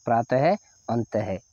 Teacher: ह का आपको आवाज निकल रही है अंत में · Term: विसर्ग